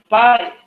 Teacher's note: pa in pen can be described as voiceless, bilabial, stop, or plosive